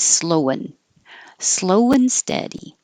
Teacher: instead of saying a perfect and, just make it an un. So now it's slowin'.